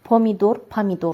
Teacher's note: Əgər o vurğusuz halda onun üzərinə vurğu düşmürsə, o olacaq a kimi.